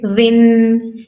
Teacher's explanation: नरमी के साथ, यानी जुबान का जो किनारा है उसको ऊपर वाले दांतों से टच करेंगे, ज़ाल अदा होगा